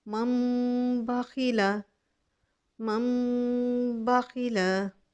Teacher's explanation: मिम बादी, ये देखो मीम, मीम को मैंने मीम, नून को मैंने मीम में बदल दिया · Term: इकलाब